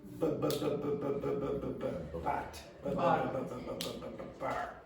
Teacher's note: in English the B sound is produced only with the lips.